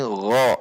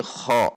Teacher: Kalau gho itu digesek memiliki sifat jahar dan rokhwah. Berarti digesek.